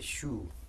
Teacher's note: we formed a long vowel here just twice as long so rather than shu we say shu let's have a look